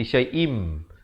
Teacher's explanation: tanwin bertemu mim, dibacakan dengan masuk terus dengan 2 harakat, dengung. Asalnya syai'in, tapi bila datang mim jadi syai'im, dengung 2 harakat. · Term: idgham bi gunnah